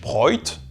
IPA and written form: ˈbʀɔɪ̯t (broyt)